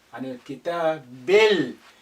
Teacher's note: Again, this alif is silent because it's not at the beginning. The lam retains its sukun because the kaf is a moon letter, it's not a sun letter.